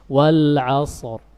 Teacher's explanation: Tetap ketika waqaf pada ra, walaupun dia sukun, punggung lidah naik ke atas. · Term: tafkhim